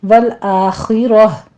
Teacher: والآخرہ میں خوا بھی پر ہے، را بھی پر ہے، آخر میں ہا کی ساؤنڈ آپ نے لانی ہے ، کیونکہ تائے مربوطہ پہ ہم وقف مطلق ہے، یہاں پہ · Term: وقف ابدال